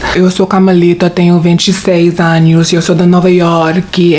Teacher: She has a deeper voice and stuff, like a huskier voice.